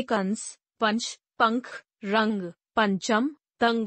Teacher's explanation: इसका उच्चारण करते समय हवा नाक से बाहर निकलती है। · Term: अनुस्वार